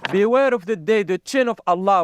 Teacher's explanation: he's saying chin for shin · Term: cha sound